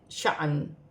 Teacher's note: الف کو حمزہ بھی پڑھا جائے گا اور جھٹکے کے ساتھ پڑھا جائے گا